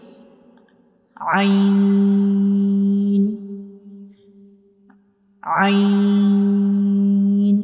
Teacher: So ain is pronounced from the middle part of the throat. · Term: throat letter